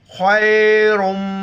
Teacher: रा पर पेश है, रा को मोटा करेंगे, खा को मोटा करेंगे